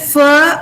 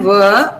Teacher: Fur is unvoiced, ver is voiced.